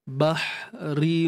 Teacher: Tengah kerongkong sempit kan. Ra baris bawah nipis · pastikan kita angkat pangkal lidah untuk datangkan sifat tebal tu